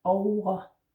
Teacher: the V in over is not really a V. You don't need to really bite your lip here. It's more like a W or an U kind of sound. Over. Note here I'm saying over, but actually most people say O-A.